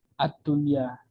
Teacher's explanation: Dia nggak dibaca dengung, soalnya satu kata, nun sukun bertemu ya.